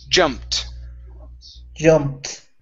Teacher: so this ed ending sounds like a t